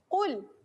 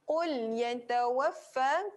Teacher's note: Pangkal lidah melekat ke kerongkong. Belakang lidah. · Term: tebal